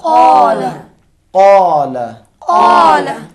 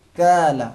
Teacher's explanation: قاف قلم کو ادا کرتے وقت زبان کی جڑ اوپر کے نرم تالو سے ٹکرائے گی